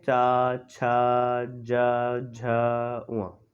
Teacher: चा वर्ग होते हैं, और इसे हम बोलते हैं तलव्य। यानी कि जो जो हमारी जीभ होती है वो तलवे से लगती है।